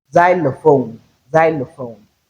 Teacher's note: we can realize the letter x as z at initial position that is at the beginning of word